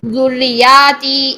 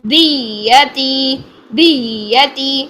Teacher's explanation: یا کی تشدید کو ادا کرنے کے لیے را کی آواز کو اٹھائیں گے